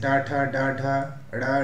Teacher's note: मूर्धन्य कठोर तालु के अगले भाग से